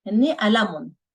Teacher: Hinni alamun, their pen, the on sound in the end. So again, we pronounce the meme as a noon, typically in Lebanese